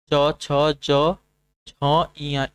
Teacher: तालु की मदद से उच्चारित होने वाले व्यंजन आपके तालव्य व्यंजन कहलाते हैं